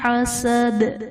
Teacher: حسد میں دال جو کہ حرف قلقلہ ہے وقف کی صورت میں جب ساکن ہوگا تو اس میں ہم قلقلہ خوب ظاہر کر کے پڑھیں گے